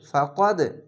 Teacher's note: এখানে কলকলা ধাক্কা মেরে নিচে সাউন্ড আসবে।